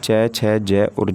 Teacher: च, छ, ज और ज, ये हिंदी की तालव्य ध्वनियाँ हो जाती हैं